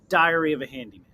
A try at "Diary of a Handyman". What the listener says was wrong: When you should make sure you separate those words. Diary of a Handyman. Because when you said it said Diarrhea Handyman. Not Diarrhea Handyman.